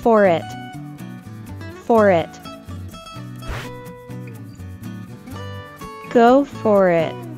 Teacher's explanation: remember to link the final sound in for with the initial sound e in it for it for it go for it [Music] go for it